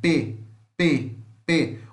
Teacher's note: P é uma consoante bilabial oclusiva